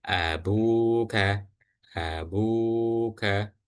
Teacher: Ba yang harokat dhammah bertemu dengan waw sukun, maka dibaca panjang 2 harokat.